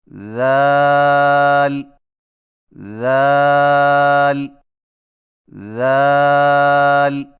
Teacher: ذال کی ادائیگی میں زبان کی نوک کو ثنایا علیہ کے اندرونی کناروں سے نرمی سے لگا کر باریک آواز میں پڑھیں